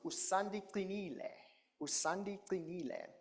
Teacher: And it is a sharp, high-pitched sound. It's called the dental click because you put the tip of the tongue behind your teeth, top teeth, and then you just lower the tongue.